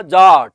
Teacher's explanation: और आ बोलते समय मुंह क्या खुलता है? पूरा। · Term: विवृत